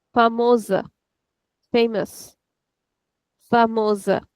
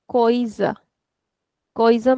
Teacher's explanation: the letter S is coming in between two vowels and whenever this will be the case then the S is equal to Z. The sound is of Z.